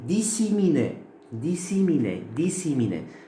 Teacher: c'est une assimilation à distance parce que c'est une voyelle qui a changé. Comme d'habitude, les traits articulatoires, là, bien sûr, on fait le i et le e.